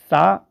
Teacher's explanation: जब हम सा को कहते हैं तो जो सा का उच्चारण है वो तालु से होता है